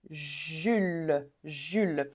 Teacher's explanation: on va pas prononcer le S